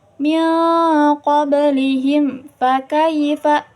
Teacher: Jangan dimasukkan ke huruf yang di depannya, karena ini izhar. Jelas ya, jelas. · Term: izhar syafawi